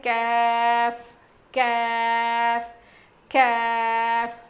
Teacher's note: زبان کی جڑ سے ادا ہوتا ہے